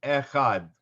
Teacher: right before you get the vowel there's just a tiny bit of a break as you open up your throat to make the sound that's the sound of the aleph so this aleph is kind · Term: tiny glottal stop